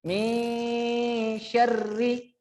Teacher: Jadi ra-nya memang ada tanda tasydid akan tetapi dibaca tipis saja.